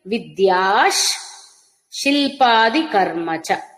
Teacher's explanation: విద్య తర్వాత విసర్గ అది శకారంగా మారుతుంది